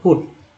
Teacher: पुट में यू का उच्चारण क्या हुआ भाई तो ऊ के रूप में हुआ